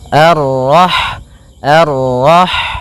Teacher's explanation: Kemudian pada lafal rah di sini ada huruf ha, ha yang berharakat sukun, dan sifat ha itu yang paling mencolok adalah sifat hamsnya, yaitu mengalirnya nafas ketika kita membacanya